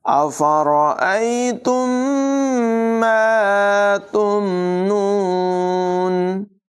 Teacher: افرأیتم، میم کے بعد ایک اور میم ہے، یاد رکھیں میم ساکن کے بعد جب دوسری میم آ جائے تو وہاں پر غنہ کر کے پڑھتے ہیں، ادغام شفوی ہوتا ہے، یعنی دونوں میموں کو ملا کر غنہ کر کے پڑھیں گے